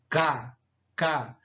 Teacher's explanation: E as velares são pronunciadas pelo contato entre a parte traseira da língua, certo? E o véu palatino, K, K. Você percebe quando você pronuncia que a sonoridade ela fica lá na parte final da língua, né?